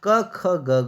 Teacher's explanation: क वर्ग क ख ग घ या कंठ से बोले जाते हैं, मतलब कंठ मतलब गले से